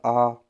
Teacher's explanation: विवृत मतलब पूरी तरह से खुला